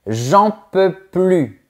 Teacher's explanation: « J'en peux plus » sans prononcer le N'. Au quotidien, quand on parle, généralement, on évite de prononcer le mot « ne ».